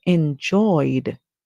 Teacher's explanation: enjoy is our word and then we add the ed sound when we add the Ed we would hear the sound D for the Ed because we can hear the oi sound at the end